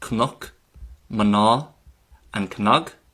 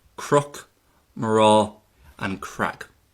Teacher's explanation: So, while you might know these words as Cnoch, Maná, and Cnog, in Ulster they're normally pronounced as Crook, Mará, and Crag. Okay, so when we have the N as the second letter, it's going to be pronounced as an R in Ulster. So that is why Gnáthamh starts off with a gra sound.